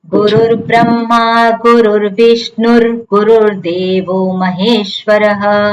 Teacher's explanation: આખું બોલીએ તો, જો લાઈન ને છૂટી પાડીએ તો ત્યાં ગુરુર બ્રહ્મા ગુરુર વિષ્ણુ થાય, પણ જો આખી લાઈન બોલીએ તો ત્યાં વિસર્ગ ના બોલવાનો હોય પણ રેફ બોલવાનો હોય